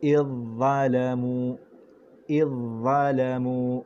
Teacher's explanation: huruf zal nipis, huruf dha tebal, kita masuk terus kepada ketebalan huruf dha